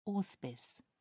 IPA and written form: ˈɔːspɪs (auspice)